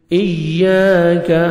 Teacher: رہی ہے، مالک یوم الدین، ایاک نعبد و ایاک نستعین، ایاک، حمزہ کو یا مشدد کے ساتھ ملائیں گے، یا کا ساؤنڈ آئے گا ، اور الف مدہ 1 سیکنڈ آپ نے یا کو کھینچنا